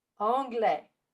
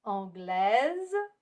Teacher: we do not pronounce the consonant at the end of a word, like the final S in anglais. But when you add an E after a consonant, that makes us pronounce the S, like in anglaise.